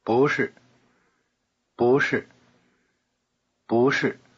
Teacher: notice the rising tone on 不.